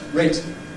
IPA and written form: ˈreɪtɪŋ (rating)